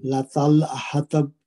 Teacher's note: لطل حطب، تا چونکہ حروف مستعلیہ میں سے موٹے حروف میں سے اس کو پر پڑھیں گے، اور با پہ کلکلا کبرا ہوگا